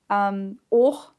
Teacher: the AU diphthong gets O, becomes O